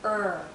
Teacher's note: central part is going up because the tip is curling back there's some tension in my tongue when I say IR because there's curling and there's Rising here in the central part of my tongue